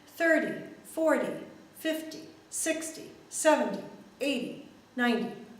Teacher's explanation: the first syllable is stressed it's set a little bit higher louder and longer a little bit of a punch there and then the second